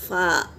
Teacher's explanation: फ़ा दोनों होठों से अदा होगा, ऊपर के 2 दांत और दोनों होठों से अदा होगा फ़ा